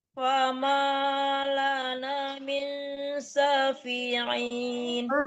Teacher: Jangan ditekankan nun, tapi disamarkan ke shin ya. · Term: Dengung